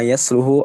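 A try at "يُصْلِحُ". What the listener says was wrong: Dari kata aslaha, yuslihu. Kalau dibacanya soluha, soluha itu baik. Soluha atau solaha itu baik. Kalau aslaha artinya memperbaiki. Ya alama yuslihu Ya, yuslihu dari kata aslaha. Ya, yuslihu ahwalahum.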